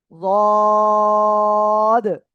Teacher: জিহ্বার গোড়ার কিনারা উপরের মাড়ির দাঁতের গোড়ার সঙ্গে লাগিয়ে এই অক্ষরটা আপনাদের উচ্চারণ করতে হবে।